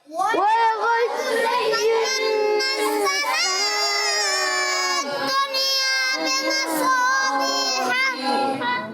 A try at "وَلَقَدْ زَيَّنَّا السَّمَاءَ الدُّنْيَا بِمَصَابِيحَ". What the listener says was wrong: جی ہاں تھوڑی جلدی کر دی، مد کو کم کھینچا ہے، مد کو کھینچنا ہے۔ جب آپ پورا مد کھینچ لیں گے تو آپ سب کے ساتھ مل